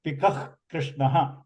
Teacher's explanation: You see the Kākaha, the visarga of Kākaha is followed by the kakara of Krishna. So we pronounce that as a jihva mulya.